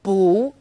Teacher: bu when used on its own bu is fourth tone bu when bu is used before another fourth tone it becomes second tone